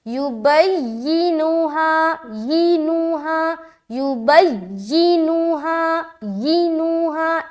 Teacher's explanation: تو نبر کہتے ہیں ایک اسپیسیفک جو لیٹر ہوتا ہے اس کی آواز کو بلند کرنا، بلند یعنی کہ وہ لفظ میں اس لیٹر کی جو آواز ہے وہ اونچی معلوم ہوگی، جیسے کہ یہاں پر یا پر نبر کریں گے تو یا تھوڑی لاؤڈ کریں گے